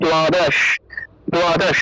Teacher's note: তারপর দেখুন দ্বাদশ, এই দ্বাদশ শব্দটা, এই দ্বাদশ শব্দের ক্ষেত্রে উচ্চারণটা হবে দ্বাদশ, দ্বাদশ, কারণ দ্বয়ের নিচে বফল থাকায় উচ্চারণটা হবে দুয়, উচ্চারণটা হবে দুয়। আর এখানে আকার থাকে, আকার দিয়ে দিলাম, তাহলে দ্বাদশ, দ্বাদশ উচ্চারণ হবে।